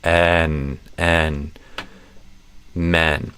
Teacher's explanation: And instead of a closed E, it's an open E. So you just do a kind of a eh sound.